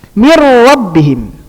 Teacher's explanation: min enggak dibaca gunnah, min enggak, langsung mir rabbihim. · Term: idgham tanpa gunnah